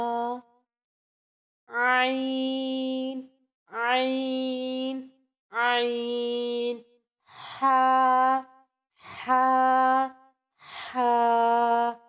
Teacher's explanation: عین حا حلق کے درمیان والے حصے سے ادا ہوتے ہیں۔